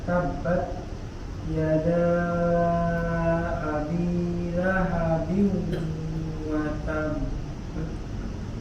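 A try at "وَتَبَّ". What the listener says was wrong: Nah, jangan terlalu lama juga, Dok. Jadi ditahannya jangan terlalu lama juga. Watab, ya sebentar aja. Watab.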